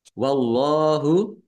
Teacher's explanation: Allahnya dibaca tebal karena harokan di depannya fathah. Lam fathah berdiri, mat tobi'i, panjang 2 harokat.